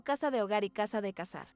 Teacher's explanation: la Z y la C suaves suenan exactamente igual que una S. Lo que provoca que palabras como casa de hogar y casa de cazar sean fonéticamente idénticas. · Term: ceseo